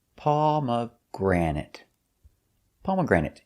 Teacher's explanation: Stress is on the first, pomegranate, and third syllable.